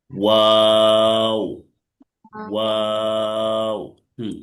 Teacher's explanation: ওয়াও তিন আলিফ টেনে পড়তে হবে। ওয়াও মাখরাজ হচ্ছে দুই ঠোঁট গোল করতে হবে, একটু মাঝখানে ফাঁকা রাখতে হবে।